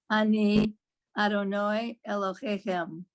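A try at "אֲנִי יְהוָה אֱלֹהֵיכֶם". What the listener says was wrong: Very nice. Lovely.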